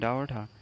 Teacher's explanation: उच्छिप्त दो होते हैं, डा और ढा, जो ऊपर उठ के अचानक जीभ गिरती है